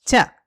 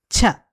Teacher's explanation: The first one is cha. And the second one is with more breath cha.